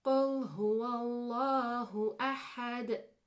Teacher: So you can hear that Dal bouncing at the end of that ayah. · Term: Qalqalah